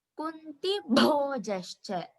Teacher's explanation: bho has to be stressed.